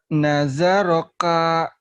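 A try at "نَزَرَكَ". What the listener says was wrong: Naza jangan naja, naza agak keras dikit. Nazaroka gitu. Naza bukan naja ya, naza.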